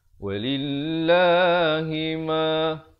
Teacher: Dia tak boleh baca walillahi ma tak boleh dengar walillahi ma. Lam itu ditekankan di atas, ke atas lam yang kedua yang bertanda sabdu.